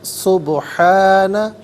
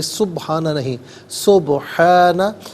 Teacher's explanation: با ساکن ہوگا لیکن با حرف قلقلہ ہے تو آواز لوٹتی ہوئی محسوس ہونی چاہیے